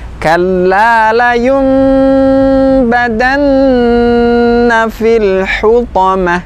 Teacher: ketika melafalkan atau mengucapkan bunyi gunnah, maka diperpanjang lebih daripada mat tabi'i. Kalau mat tabi'i itu satu ayunan, maka tambahlah sedikit, nah, agar lebih sempurna mengucapkan gunnahnya.